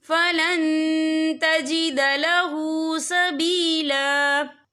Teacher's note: या देखिए फलन, यहाँ नून साकिन है, नून साकिन के बाद जो है ता आ रहा है और ता जो है इक्फा का वर्ड है, तो हम यहाँ इक्फा करेंगे, तनवीन की आवाज को नाक में छुपाएंगे